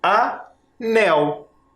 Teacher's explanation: A outra palavrinha que eu quero montar aqui é anel. O nel é a última sílaba tônica. Nel. E o A é a penúltima sílaba, que é a mais fraquinha.